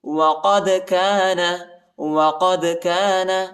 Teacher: دال کو جھٹکے کے ساتھ پڑھیں گے، حروف قلقلہ کا حرف ہے، اور یا بڑا قاف ہے، اس کو موٹا پڑھیں گے۔